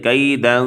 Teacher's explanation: جہاں پر اخفا ہے، جیسے کیدن، دال دو زبر دن، نون تنوین ہے اور اس کے بعد کاف حروف اخفا کا حرف ہے، تو یہاں پر اخفا کیا